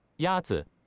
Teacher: Is pronounced with a first tone.